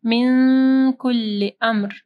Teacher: نون ساکن کے بعد کاف ہے، اخفا غنہ ہوگا